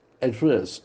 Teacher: the accent falls on the second syllable